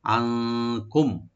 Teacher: নুন সাকিন এখানে আমরা ইখফা করব, আর মিম সাকিন এখানে আমরা থেমে যাব